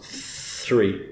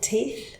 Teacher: So the number 3, which is also particularly hard because of the R coming afterwards, that's a voiceless one.